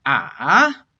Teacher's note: the third tone is a dipping tone ah now normally we just call this a low falling tone